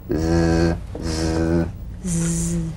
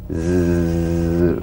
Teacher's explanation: The Z vibrates in that very small open space between the tongue and the upper teeth. Right in here.